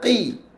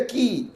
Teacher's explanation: dinamakan tabkhim nisbi, iaitu tebal pada pertengahan yang sederhana.